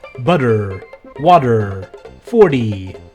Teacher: we tend to slur our middle T sounds into a D